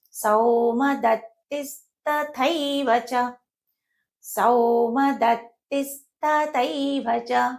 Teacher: సానిది సంయుక్తాక్షరం కాబట్టి దాని ముందుండే అక్షరం పైన ఆఘాతం పడుతుంది.